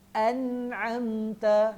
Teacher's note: An'amta itu izhar. No, izhar tak boleh dengung.